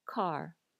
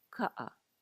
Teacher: Take the word car in English. Do you hear how there's air after the k sound? Car. In Hawaiian, there's going to be less air.